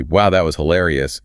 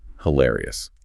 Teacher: To deploy the word correctly, your vocal pitch must rise.